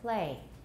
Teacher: in theory it's play play but in practice we say play no voicing at all you can still tell that it's an l but we're not voicing it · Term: devoiced